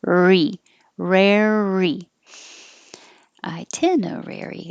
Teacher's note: keep your tongue curled back when you say rare hold it there